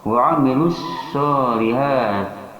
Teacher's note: sha ini mempunyai sifat hamas, yaitu ketika diucapkan akan berhembus napas. Kemudian yang kedua, sha itu mempunyai sifat rokhawah atau dilonggarkan, bukan syidah, bukan juga tawasud. · sha mempunyai sifat shafir, yaitu ada desisan dalam mengucapkan sha ini.